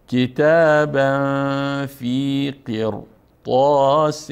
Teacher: اما اینجا برخلاف عادت ری اگر متوجه باشین ری ساکن هست و ما قبل آن مکسور، یعنی باید چی بخوانیم؟ باید باریک بخوانیم. اما ما خلاف عادت اینجا پر خواندیم.